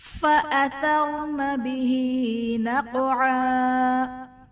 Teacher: فَأَثَرْنَ نہیں پڑھنا ہے بلکہ فَأَثَرْنَ بِهِ میں ہا کے نیچے کھڑا زیر ہے جو کہ یا مدہ کے قائم مقام ہے، اس لیے اسے ہم ایک الف یعنی دو حرکات کے برابر کھینچ کر پڑھیں گے۔ اور نقعا میں قاف حرف قلقلہ ساکن ہے تو یہاں پر قلقلہ خوب ظاہر ہوگا · فَأَثَرْنَ میں را ساکن سے پہلے زبر ہے، را کو پر پڑھا جائے گا، اور ثا بالکل نرمی کے ساتھ بغیر سختی اور بغیر سیٹی کے ادا ہوگا